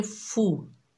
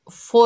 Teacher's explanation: बगैर खींचे पढ़ेंगे फू, फो नहीं पढ़ेंगे, फो मजहूल है